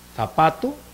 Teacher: Interdental, la lengua entre las dos fileras de dientes incisivos.